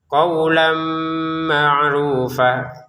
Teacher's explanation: Qawlan ma'rufa, tulisannya qawlan, tapi karena di depannya ada mim, kita masukin tanwinnya ke mim dengan dengungan. Qawlan ma'rufa, dengungannya 2 harokat, jangan sampai kurang ya.